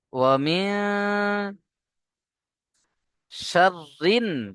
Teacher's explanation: শিন এসছে। তাই নুন সাকিন কে নাকের মধ্যে তুলে একালিপ পরিমাণ গুণনা করতে হবে